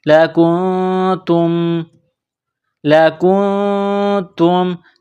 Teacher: نون ساکن کے بعد تا ہے، حروف اخفا ہے تو یہاں غنہ کریں گے، آواز ناک میں چھپائیں گے